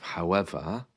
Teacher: notice the r again is missing there at the end of however